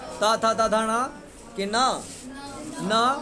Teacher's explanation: इन सभी वर्णों का उच्चारण किससे होता दंत से होता है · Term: दंत वर्णम